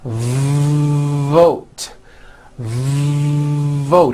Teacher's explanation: don't make the v sound too short let's look at the word vote you've got to stretch out the v like this vote vote are you hearing that long v sound